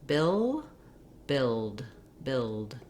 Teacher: the tongue lifts in the same position for the L as it does for the D. It's just when I say the L sound, bill, the sound can continue, air flows on the sides of my tongue, and then when I finish it with the D, my tongue seals off and the air bursts out.